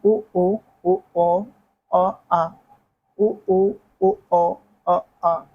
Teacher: मध्य भाग में अ पश्च भाग में उ ओ ओ औ